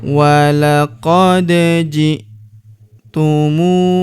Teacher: Huruf da berharokat sukun kita pantulkan atau kita qalqalahkan.